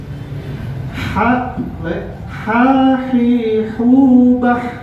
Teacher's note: Baik, coba kita sama-sama untuk mengucapkan huruf H. Ingat ya, H ini keluar dari tengah tenggorokan, dan H mempunyai sifat huruf adalah al-hams ya.